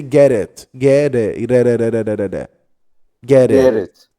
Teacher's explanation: there is a flap T here. The same t we say in water and daughter and batter.